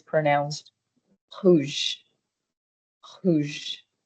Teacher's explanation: Again, if you can't pronounce it very well right now, you can just use the sound R, but essentially the sound is supposed to be R, R, and when we say the word Rouge, it is pronounced rouge, rouge, with again from the very back of your throat, you're going to as if you're clearing your throat, you're saying rouge, rouge.